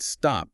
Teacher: But if you say the word stop, that T doesn't have the puff of air, it's just T